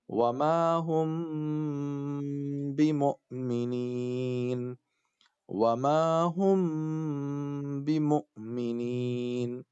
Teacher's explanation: میم ساکن کے جسٹ بعد با آ رہا ہے نا، تو اب یہاں کیا کریں گے؟ ناک میں آواز رکھیں گے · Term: اخفا